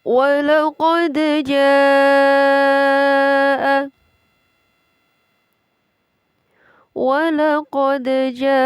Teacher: Walaqad, ini adalah hukum bacaan qalqalah. Walaqad pada huruf dal yang berharokat atau bertanda sukun dibaca dengan memantul. Dan qalqalah ini dinamakan qalqalah sughra karena berada di tengah ayat.